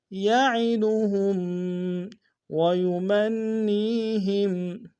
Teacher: ويمن میں نون مشدد ہے، غنہ کریں گے، اور یا مدہ ہے۔